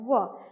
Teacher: जैसे आप बोलिए व, और मेरा ऊपर वाला दांत है वो नीचे वाले ओष्ठ में थोड़ा सा टच होता है, व। न तो वह पूरा पूरा दांत से उच्चारण हुआ और न तो पूरा पूरा ओष्ठ से उच्चारण हुआ। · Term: अर्ध स्वर